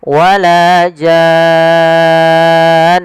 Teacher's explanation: panjangkan dulu jannya 6 harokat, kemudian masukkan nun dan ditahan, baru dimatikan nunnya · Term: mad lazim kalimi